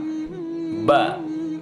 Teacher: Ba, bibirnya pasti terkatup dulu baru kita bisa menyebut ba.